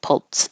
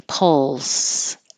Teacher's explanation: The L has constant airflow and the S has constant airflow.